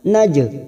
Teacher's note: jim sukun qalqalah sugro, karena mati asli di tengah kalimat kita pantulkan naj